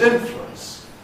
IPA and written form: ˈɪnflwəns (influence)